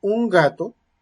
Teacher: voy a tener que hacer la oclusiva porque va después de consonante nasal , pero voy a estar, o sea, naturalmente me va a